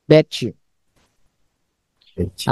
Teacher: T bertemu dengan Y itu dibacanya C.